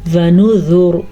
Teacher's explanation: را ساکن ہو گئی وقف کی وجہ سے, ساکن را سے پہلے پیش ہے تو را پر پڑی جائے گی